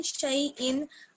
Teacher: शीन को या से मिलाएंगे, या लीन है